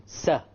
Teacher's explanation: the tip of the tongue connects with the gum behind the upper incisors and there is a slight gap between them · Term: Sin